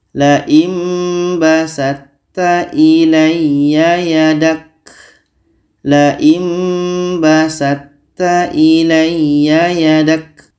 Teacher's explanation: Masuknya to kepada ta ini kurang sempurna. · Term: idgham mutajanisain